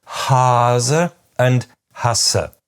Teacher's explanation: there is almost no difference at all in tenseness